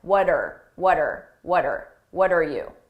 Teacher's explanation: the r just becomes er er and I attach it to what